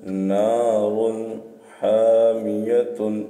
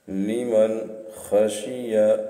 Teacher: تنوین یا نون ساکن کے بعد حروف حلقی آیت نون کو ظاہر کر کے بلا غنہ کے جلد پڑھیں گے، اس کو اظہار کہتے ہیں